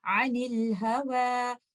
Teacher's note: تو آپ حمزۃ الوصل کو ڈراپ کر دیں گے اور اس پہ کوئی بھی واول نہیں ڈالیں گے